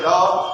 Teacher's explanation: क्योंकि ल पढ़ते हैं ल, तो ल पढ़ते समय क्या है? जीवा दंत मूल में जाके टकराती है